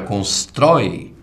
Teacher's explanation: na palavra constrói, você tem um ditongo aberto, oi, mas você tem uma oxítona